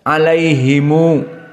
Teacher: ataupun antumtum ataupun kum maka damir-damir mim aljamak Hum kum Tum dibaca dengan Silah maknanya didamahkan seperti ada wau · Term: Silah mim aljam